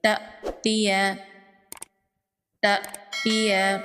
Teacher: حمزہ ساکن ہے، اس لیے حمزہ ساکن کو جھٹکے سے پڑھیں گے۔